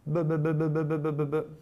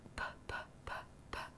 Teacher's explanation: Eh bien, comme nous l'avons vu lors des leçons précédentes, les consonnes P et P se distinguent principalement par l'aspiration forte ou faible. Lorsque l'on prononce le B, l'aspiration est tellement faible qu'on la distingue à peine, tandis que le P se prononce avec une forte aspiration.